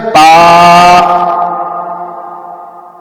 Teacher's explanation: اور جیسے دوسرا لفظ ہے با، با جو ہے یہ منہ کے یعنی ہونٹوں کے تر حصے کو ملنے سے ادا ہوتا ہے، یعنی جو دونوں ہونٹوں کا گیلا حصہ یعنی تر حصہ ہے یہ آپس میں ملے گا تو با ادا ہوگا